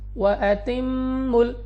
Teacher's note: وَأَتِمُّوا، میم مشدد غنہ کر کے پڑھیں گے۔ میم اور نون مشدد میں ہمیشہ غنہ ہوتا ہے، اور غنہ سے مراد یہ ہے کہ ناک میں لے جا کر پڑھنا ہے۔